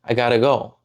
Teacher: It's a tap, not a T.